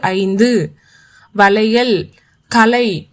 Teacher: ஐ என்ற உயிர் நெடில் வந்து தனக்குரிய ரெண்டு மாத்திரை அளவினை விட குறைஞ்சு ஒலிக்குது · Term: ஐகார குறுக்கம்